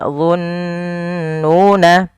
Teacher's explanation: Kemudian belafal dhunnuna, di sini ada bacaan gunnah, yaitu apabila ada nun berharakat tasydid atau mim berharakat tasydid, itu kita namakan dengan bacaan gunnah. Cara membacanya yaitu menahan suara nunnya sepanjang 2 harakat.